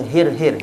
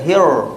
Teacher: Roh tebal, masa kita sebut hir tu kan, lidah kita belakang sikit. Belakang daripada roh biasa.